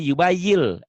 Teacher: Karena dia di hadapannya bunyi L, jadi yubayil, N-nya hilang. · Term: idgham